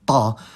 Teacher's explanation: the voiceless alveolar emphatic plosive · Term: emphatic consonants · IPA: [tˤ]